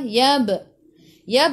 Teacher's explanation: Yab qalqalah sughra, lantunannya kecil.